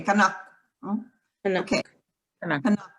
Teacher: Yeah, kanaku, if you have to say the ku. But kanak, it's like in Japanese, because Japanese has voiceless you after the K.